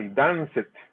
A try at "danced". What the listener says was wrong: Danced. And you can feel free to make that T sound. Danced.